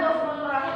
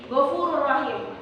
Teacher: nun mati atau tanwin sepenuhnya ke dalam huruf lam atau ro tanpa memakai dengung sama sekali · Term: idgham bila guna